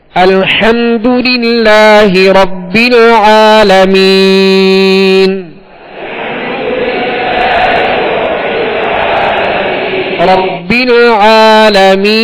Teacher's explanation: ربل عین کو وسط حلق سے ادا کرنا ہے